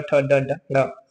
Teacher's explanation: ट वर्ग वाला जो है सारा मूर्धा से बोला जाता है। ट ठ ड ड ल। · अगला क्वेश्चन देखते हैं, मूर्धन्य जो मूर्धा से बोला जाता है, ठीक है, ट वर्ग वाला, ट वर्ग वाला जो है सारा मूर्धा से बोला जाता है